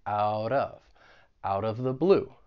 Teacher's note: I'm going to pronounce that t as a flap T it's going to sound like a soft D and then I will link it with the vowel sound in